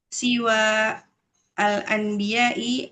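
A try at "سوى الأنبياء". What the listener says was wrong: disambungnya siwal anbiya'i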